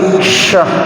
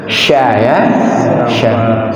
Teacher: Nyebar dia di dalam mulut, kemudian dari celah lidah kita itu antara langit-langit atas dengan punggung lidah itu, disitulah suaranya keluar. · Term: Huruf shin